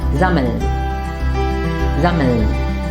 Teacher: the mm should not be pronounced twice. Instead, the vowel a should be short.